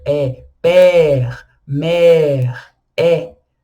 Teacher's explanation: o acento grave e aí a gente dá o som de é mais aberto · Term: som de E, mais aberto